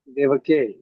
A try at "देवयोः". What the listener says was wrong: क क्यों ला रहे हैं आप? क तो बालक का क है, सिर्फ योहो लाना है, देवयोहो, देवे, देवयोहो,